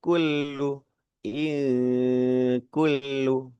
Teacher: Di pangkal lidah mau ke arah tenggorokan ya huruf kaf itu. Maka pengucapannya eng gitu ya. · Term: ikhfa